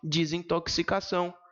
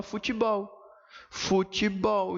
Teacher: A primeira vogal ocorrente pode ser pronunciada com I pelo falante brasileiro.